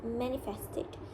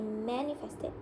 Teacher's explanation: The sound is voiced, bilabial, and nasal. So it is produced by closing the lips and allowing the vocal cords to vibrate.